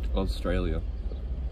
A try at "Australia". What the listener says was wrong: There's no Z.